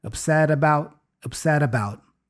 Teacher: we have a vowel right after for the about. So the T becomes a flap T, the da-da sound.